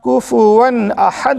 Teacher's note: تنوین یا نون ساکن کے بعد حروف حلقی آئیں تو نون کی آواز کو ظاہر کر کے بلا گنہ کے جلدی سے پڑھیں گے، اس کو اظہار کہتے ہیں۔